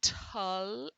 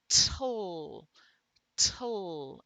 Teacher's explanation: it is a syllabic L that is the tongue sliding from the t to the l, and air is coming out beside the tongue here. So we don't have a sound there, but by convention we put an E there.